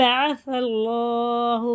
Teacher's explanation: यह अलिफ खाली है ना यह वाला अलिफ भी नहीं पढ़ा जाएगा सा लगेगा लाम में और यह अल्लाह का लाम पुर है बारीक नहीं पढ़ेंगे इसे पुर करके पढ़ेंगे मोटा करके · یہ اللہ کا لام پر ہے، باریک نہیں پڑھیں گے، سب پر کر کے پڑھیں گے، موٹا کر کے